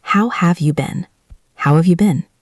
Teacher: Notice that the word have is very short. We almost don't hear it.